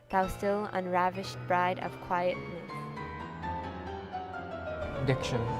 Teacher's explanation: the meter of the poem which is in strict iambic pentameter starts with an unstressed syllable followed by a stressed one